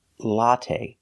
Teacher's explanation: Put the stress on the first syllable.